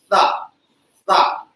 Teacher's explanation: जिह्वा के अग्रभाग को ऊपर के दांतों के साथ मिलाकर आप जब ध्वनि उच्चारित करेंगे तो ये दंती सा होगा · दंती सा के लिए आपके मुख में और कुछ नहीं, जीभ का अगला हिस्सा आपके दांतों के पास ऊपर वाले दांतों से आकर टच हो जाएगा